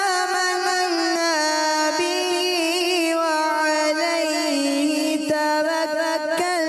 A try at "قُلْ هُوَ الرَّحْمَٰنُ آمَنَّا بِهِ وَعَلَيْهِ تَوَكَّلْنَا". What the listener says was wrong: تھوڑا را کو پر رکھنا ہے. دوبارہ پڑھیے گا.